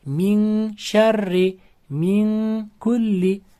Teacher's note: Mana shu qoidamiz ya'niki shu nunni shni chiqadigan maxrajga yashirib o'qish yoki nunni k harfini kaf harfini chiqaydigan joyga yashirib o'qishga igfo deyiladi